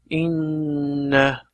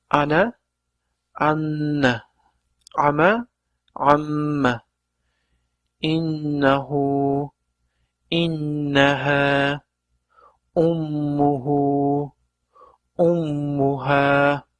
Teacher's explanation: Demak, mana shu yerda tashdid qilib o'qilganda inna deb havo burnimizdan chiqib, biroz g'unna bilan, ya'ni dimoq bilan o'qiladi.